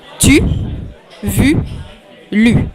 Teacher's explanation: The U is just in front of the palate, and you push your lips forward.